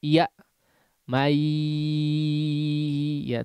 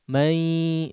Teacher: alirkan suaranya lewat khayshum atau rongga hidung ya. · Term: gunnah